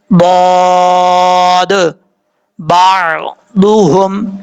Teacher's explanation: زبان کی left side یا زبان کی دونوں سائڈیں آپ نے اوپر والی جو داڑھیں ہیں ان کے ساتھ ٹچ کرنی ہے، ان کے مسوڑوں کے ساتھ ٹچ کرنی ہے.